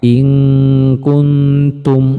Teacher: hurufnya ada 2 teman-teman, qaf dan kaf, dan inilah yang dibaca ang. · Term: ikhfa ab'ad